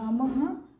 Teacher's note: विसर्ग का उच्चारण ह किया जाता है